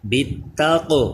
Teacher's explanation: قوف یہ ساکن ہے حروف قلقلہ، اس میں آواز لوٹ کر آئے، قلقلہ کریں